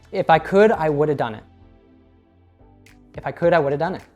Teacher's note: nailing the linking with would and have. I'm not sure if you noticed, I actually cut out the H sound in have altogether, which I believe we saw in an earlier example.